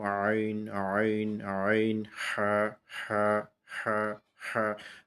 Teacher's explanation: গলার মাঝে যে অংশটা সেই জায়গাটা থেকে আমরা যেটা বের করব যেই হরফ দুইটা সেটা হইল আইন এবং হা।